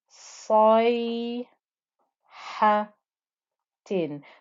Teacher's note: you can still hear the thickness, the heaviness of the sad before with that fatha before you join it up to the ya. Then dad with the fatha joining to the ya with the sukoon.